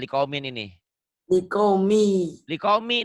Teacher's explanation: tiap tanwin yang bertemu dengan huruf bertasdid maka tanwinnya dibaca satu dibacanya nyambar ke huruf yang bertasjid